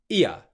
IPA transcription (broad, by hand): i.ə